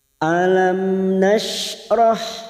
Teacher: dua huruf ini mim sukun dibaca jelas tanpa mendengung seperti ini mim sukun bertemu Nun namanya Idhar syafawi dibaca jelas